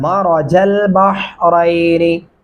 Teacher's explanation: रा को पुर करके मोटा वाला पढ़ेंगे